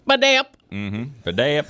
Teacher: the phonetic emphasis is on the middle syllable.